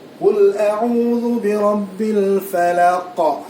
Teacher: qalqalah kubra pastikan ada pantulan yang cukup kuat dan jelas.